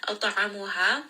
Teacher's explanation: Ain from the middle of the throat, and this is going to be a 4-count mad.